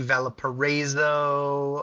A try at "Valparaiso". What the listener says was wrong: I don't think that's how you pronounce that. Valparaiso. You're adding an A in there.